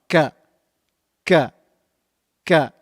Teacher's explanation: Kaf is pronounced using the back of the tongue touching the hard palate. Touching the hard palate on the top.